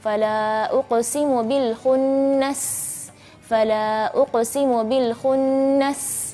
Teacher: Jadi ketika pelafalan huruf sin, uqsi, hamsnya begitu jelas, safirnya pun begitu jelas.